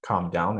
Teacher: At the end, the voice goes down.